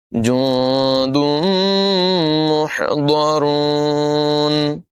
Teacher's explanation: حا کی آواز نمایاں کریں گے، ضاد کو پر پڑھیں گے، را کو بھی پر پڑھیں گے